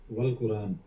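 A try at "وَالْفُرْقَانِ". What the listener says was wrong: Wal Furqan. The word looks like Quran, but it's Furqan. There are two letters.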